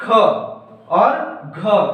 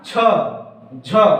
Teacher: उसके जस्ट उलट आप देखेंगे महाप्राण में, तो महाप्राण में जिनके उच्चारण में, ऐसे वर्ण जिनके उच्चारण में प्राण वायु की मात्रा अधिक निकलती है ना, अधिक निकलती है, और जिससे हकार की ध्वनि भी सुनाई देती है कह सकते हैं, या हकार की ध्वनि आती है ना, जैसे कि ख और घ, है ना, छ, झ।